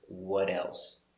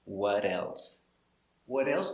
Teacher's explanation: the t changes to a d between two vowels